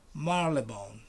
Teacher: You don't pronounce the Y.